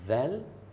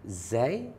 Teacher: beza dia Zal keluar lidah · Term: huruf Zal